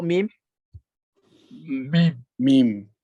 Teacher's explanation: Dia kalau kita bertutup betul-betul dia tak keluar mim tu. Sebab mim ada juzuk basit, juzuk sebahagian kecilnya dia akan keluar melalui hidung.